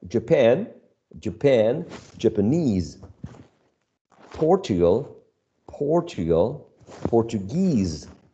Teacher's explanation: In all these adjectives that end in -ese, that specifically, in this case, are talking about nationality, the suffix attracts the stress.